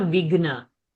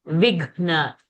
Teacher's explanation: Gha is a Mahaprana. It's not Vigna. Vighna. The Gha should be heard. Even if it is half, you have to stress.